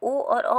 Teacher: तो ये इसका आंसर जो है ऑप्शन नंबर डी सही है, यानी कि कंठ ओष्ठ, यानी जो आवाज़ आ रही है ओ और औ की, वह कंठ और प्लस ओष्ठ के द्वारा आ रही है